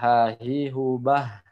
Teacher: ini adalah makhrajnya tenggorokan bawah huruf H dan huruf hamzah